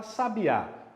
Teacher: Vamos pegar o exemplo que eu já te dei lá no começo. A palavra sabiá, qual que é a mais forte? É a última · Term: oxítona